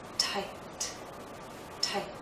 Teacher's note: I have this vowel sound, but because the T follows, it's shorter.